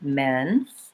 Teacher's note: the errors that tend to happen on this vowel is that people are too closed